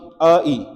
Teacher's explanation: अ वाला तो कंठ से आएगा। इ वाला तालव्य तो कंठ तालव्य आई है। कंठ तालव्य आई।